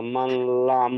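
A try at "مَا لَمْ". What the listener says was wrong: জি, এই মাটা টান হবে, এটা আলিম মাদা আছে, মিম আলিফ জবর মা। মাল নয়, মালাম।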